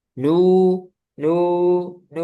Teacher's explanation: Jadi nu nu nu itu enggak boleh masuk hidung.